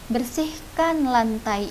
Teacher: pola intonasi kalimat imperatif, datar dan tinggi. Contohnya, kuliah kamu atau sekolah kamu, bersihkan lantai itu kan cenderung tinggi.